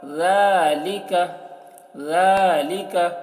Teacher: ذال کو بہت ہی باریکی کے ساتھ، اور کھڑا زبر ہے تو کھینچیں گے ، ذالک، کاف کو نہیں کھینچنا ہے، زبر ہے، ذالک۔ تو